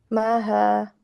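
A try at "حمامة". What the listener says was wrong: No. You swapped it. Namaha, but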